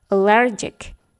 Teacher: Stress syllable-nya dalam kata allergic adalah di syllable yang kedua.